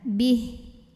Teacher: Ba-nya pendek, haknya jadi sukun. Jadi kalau berhenti tidak ada mad.